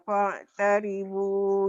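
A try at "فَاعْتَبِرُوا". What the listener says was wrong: Pak tabiru Maci, tertukar. Bukan Pak tabiru.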